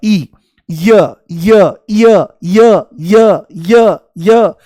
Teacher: जैसे ही य बोलोगे तो ई शुरू में महसूस होगा, ई, य य य य य य य, जैसे सीढ़ी अटक गई हो तो ई की ध्वनि आती है।